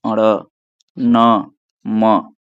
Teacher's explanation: नासकी यानी नाक से थोड़ी ध्वनि आती है। नासकी व्यंजन कहलाता है।